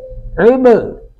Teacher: با ساکن پر قلقلہ کریں گے